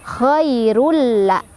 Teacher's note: Cara bacanya dimasukkan tanwinnya, jadi nggak dibaca lagi tanwin, tapi masukkan ke huruf lam tanpa berdengung. Jadi tidak berdengung, cukup ditekan aja, jangan ditahan. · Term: idgham bila gunnah